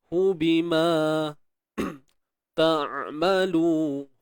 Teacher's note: huruf ain matikan, tengah kerongkong sempit